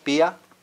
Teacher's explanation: IA generally is not a diphthong, but rather the I is pronounced separately from the A.